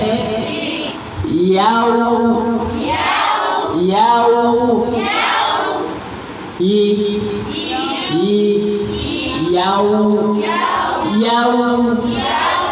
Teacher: প্রথম ঠোঁটগুলা স্বাভাবিক থাকবে তারপর আবার একটু ঠোঁটের দুই সাইড একটু ভিতরের দিকে যাবে তারপর আবার ঠোঁটটা গোল হয়ে যাবে